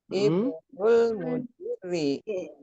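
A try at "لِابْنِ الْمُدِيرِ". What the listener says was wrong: Ada linya loh. Kan ada li. Kalau dibaca sendiri ibnu. Tapi kalau ketemu li jadi libni.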